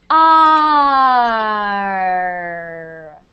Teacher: you make the R starting with an ah. So you're just going to say the letter R, but when you do it, you're going to start like this.